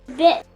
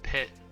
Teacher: The key difference is in the voicing. B is essentially just a voiced P.